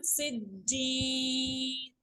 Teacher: जीम भी चूंकि कलकला letter में शामिल है तो ये भी मुशद्दद होने की सूरत में हार्ड रीड होगा, हार्ड मीटिंग होगी टीथ की।